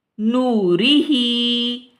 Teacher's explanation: अब यहाँ पे हम देखें कि रा के नीचे ज़ेर है और جب زیر را کے نیچے آ جاتی ہے تو را ہم پڑھتے ہیں اس میں ترکیق پائی جاتی ہے نہ کہ تفخیم، کیونکہ تفخیم جب ہوگی تو را کے اوپر زبر یا پیش ہوگی تو ہم اس کو رو پڑھیں گے.